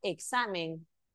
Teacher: el acento está en la penúltima sílaba